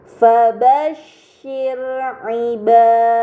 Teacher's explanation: Dan terakhir pada kata fabashshir terdapat ro sukun sebelumnya harokat kasroh yang berada di huruf shin, maka ro sukun tersebut harus dibaca secara tipis.